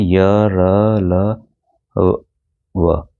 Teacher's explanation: अब देखिए अंतस्थ व्यंजन जिसे हम सेमीवोवल कहते हैं, इन व्यंजनों का उच्चारण करते समय जीभ पूरी तरह से मुख के किसी भाग को स्पर्श नहीं करती है। वे अंतस्थ व्यंजन कहलाते हैं।